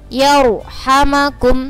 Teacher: ini ro' sukun sebelumnya berharokat fathah, maka ro-nya harus dibaca tafkhim atau tebal